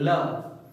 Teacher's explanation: जो हवा होती है वो दोनों जीभ के दोनों किनारों से निकलती है, बगल में होके निकल जाती है, इसीलिए ये जो ल है इसको बोला जाता है पार्श्विक वर्ण।